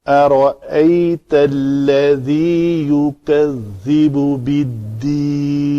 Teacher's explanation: میں نے اس لام کو پتلا پڑھا ہے کیونکہ یہ اس میں جلالہ کا لام نہیں ہے · ذال کا مخرج ہے نوک لسان دونوں دانتوں کے درمیان آئے اور یہ اس کو نرم ادائیگی رکھنی ہے.